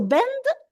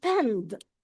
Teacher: the voiced B sound was pronounced as a voiceless P. So bend was pend.